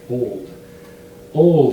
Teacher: it's the light l at the front of the mouth and the dark l at the back of the mouth